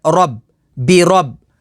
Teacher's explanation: را کے اوپر زبر ہے تو اسے پر یعنی موٹا پڑھیں گے